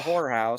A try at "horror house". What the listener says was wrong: It sounds like you said whorehouse, but okay.